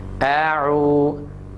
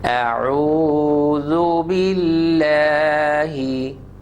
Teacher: Hamza is from the bottom and ayn is from the middle of the throat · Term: hamza and ayn